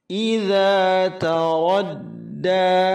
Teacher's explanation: Ta ada hamasnya, ra tebal, radda, 2 harakat, mad asli dijaga.